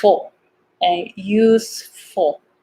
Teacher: And then this F is important here too. So make sure you pronounce F, not who. It's a lot of air.